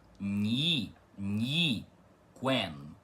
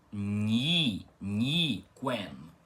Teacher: esse ni tem o i pronunciado rápido com uma como uma semivogal e esse i é mais demorado, uma vogal, tá?